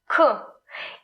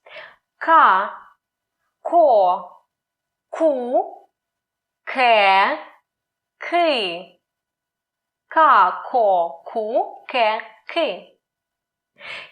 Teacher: the back of tongue touches the soft palate